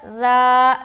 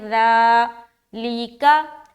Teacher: آگے پڑھیں گے، فی ذالک، فا یا زیر فی، ذال کھڑا زبر ذا، ذال کو بہت ہی نرمی کے ساتھ ادا کرنا ہے اور کھڑا زبر بھی ہے تو کھینچیں گے